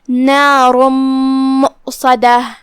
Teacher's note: ہم یہ تنوین کو میم میں داخل کر کے غنہ کے ساتھ اور تشدید کے ساتھ یہ حکم کو ادا کریں گے · کلمت مؤصدہ میں یہاں واو ہے اور اس پہ حمزہ ہے. ہم حمزہ کو ظاہر کریں گے اور اسے حلق کے نیچے والے حصے سے ادا کریں گے. دھیان رہے یہاں مد واو نہیں ہے، حمزہ ہے، تو ہم حمزہ کو ظاہر کریں گے. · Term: ادغام